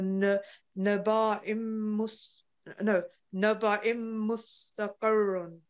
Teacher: a little bit stress on ra because tashdid is there